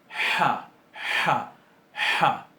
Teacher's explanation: Es una fricativa sorda, bien gutural.